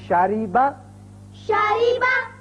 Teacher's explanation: جب را کے نیچے کسرہ یعنی زیر آ جائے تو اس کو باریک پڑھیں گے